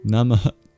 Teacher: It's a mini expulsion of breath, ah, namah. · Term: visarga